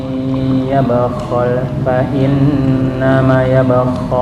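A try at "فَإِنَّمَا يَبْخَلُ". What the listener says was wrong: Nama satu alif. Fa innama yabkhalu.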